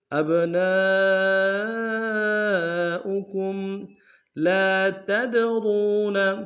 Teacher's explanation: لام کے ساتھ الف مدہ ہے، ایک مقدار میں کھینچیں گے